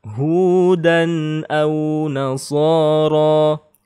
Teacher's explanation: Maka dibaca jelas ya, tidak dengung, tidak gunnah, tidak panjang. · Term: izhar